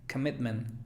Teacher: Recordemos que la schwa puede ser O, A, E, I, cualquier vocal. En este caso aquí es O, pero no se pronuncia O, sino se pronuncia schwa